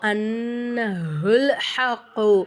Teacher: நூனுக்கு மேல சத்து வந்ததுனால நம்ம என்ன செய்யணும் நூனை வந்து நல்லா அழுத்தி உச்சரிக்கணும்